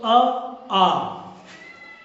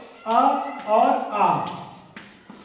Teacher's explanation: स्वरों की बात करें तो अ आ ये भी कंठ से होगा